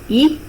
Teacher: A front unrounded vowel above half close.